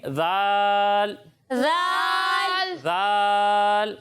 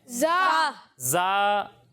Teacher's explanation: اس میں سیٹی کی آواز نہیں آتی, یہ زال نہیں ہے, زال ذال دونوں میں فرق ہے نا.